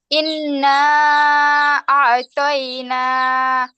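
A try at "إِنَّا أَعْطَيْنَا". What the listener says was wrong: ইন গুন্না হবে না আপু?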